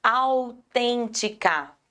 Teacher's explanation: proparoxítona porque é a anti penúltima mais forte